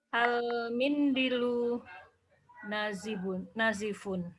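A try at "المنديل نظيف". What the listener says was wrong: Al-mindilu nadhifun. Panjang pendeknya harus pas, Om, ya. Nadhifun. Dotnya panjang, Om. Mindilu. Pelan-pelan.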